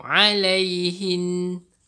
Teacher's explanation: Dengung dengan kadar dua harakat. Maksudnya panjang dia dua harakat. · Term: nun syaddah